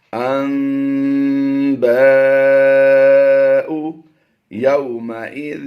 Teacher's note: نون کی آواز کو ہم نے میم سے بدل کر اقلاب کرتے ہوئے پڑھنا ہے